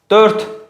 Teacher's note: Dörd formasında deyir ki, üç cingiltili samit işlənib. D cingiltili, R cingiltili, T kar. Bu səhv fikirdir.